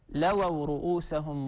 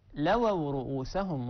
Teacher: يستغفر لكم رسول الله لووا رؤوسهم بتضعيف الواو